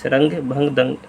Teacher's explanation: अनुस्वार में इसकी आपकी बिंदी होती है। यह एक स्वर के बाद आने वाला व्यंजन है जिसकी ध्वनि नाक से निकलती है।